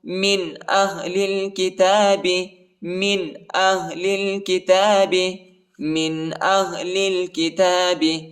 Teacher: لام کو لام کے ساتھ ملائیں گے، الف نہیں پڑھا جاتا، الف کے اوپر حرکت نہیں ہے.